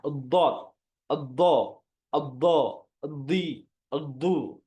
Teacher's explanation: kalau Dod kalau lam itu kan datar Tengah lidahnya datar tapi kalau Dod itu diangkat lidahnya dari tengah lidahnya itu keangkat ke atas sampai dia bertemu dengan makhraj lam